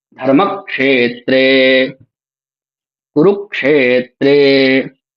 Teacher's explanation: ये दोनों ही क्षे और त्रे दोनों ही गुरु हैं, इसलिए इनके उच्चारण में ज्यादा समय लग रहा है। और ध और म इनके उच्चारण में कम समय लग रहा है, दोनों लघु हैं।